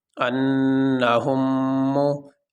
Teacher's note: اب یہاں پہ یہ میم ساکن تھا، اس کے اوپر کوئی حرکت نہیں تھی، زیر زبر نہیں تھا، اور اس کے بعد یہ میم متحرک آ گئی، اس کے اوپر پیش ہے۔ تو میم ساکن کے بعد میم متحرک آنے کی وجہ سے اس میم کو اس میم میں ضم کر دیا گیا۔ اب یہاں پہ ایک ہی میم پڑھا جائے گا، اور اس میم کے اوپر جو تشدید آ گئی وہ اس میم کو ظاہر کرنے کے لیے۔